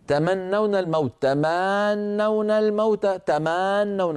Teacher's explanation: طولت الفتحه فتولد منها الف لفظيه